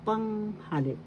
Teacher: Panghalip. The first syllable has the accent.